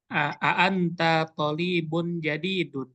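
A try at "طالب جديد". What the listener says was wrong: Pokoknya panjang. Tolibun jadidun.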